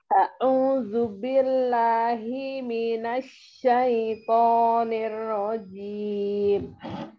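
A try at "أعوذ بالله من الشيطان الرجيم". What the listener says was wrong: Ini hi-nya enggak boleh diayun. Himina satu.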